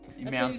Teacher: You don't pronounce the T in mountains or in pitcher.